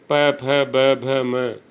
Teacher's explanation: ये ओष्ठ से इनका उच्चारण होता है, इसलिए इनको ओष्ठ्य वर्ण भी कहा जाता है। साथ में इनके उ और ऊ ये दोनों भी हैं।